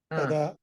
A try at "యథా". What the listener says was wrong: యథా మీరు ద పలుకుతున్నారు యథా